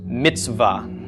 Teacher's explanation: the ts and the v are sort of just running into each other. There's no vowel sound in between them. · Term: schwa